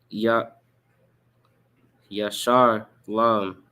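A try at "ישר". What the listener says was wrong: There's no Ra in it. Say it again.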